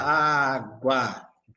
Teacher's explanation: Esse U eu quase não escuto, por quê? Porque ele é uma semivogal. · partindo do som mais fraco de uma semivogal para o som mais forte de uma vogal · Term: ditongo crescente